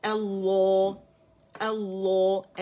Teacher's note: لفظ الجلالہ کے دونوں لام موٹے پڑھنے ہیں